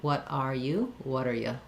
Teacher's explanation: So what and are going to link. The T becomes a flap, and the R is reduced to an so it sounds like water.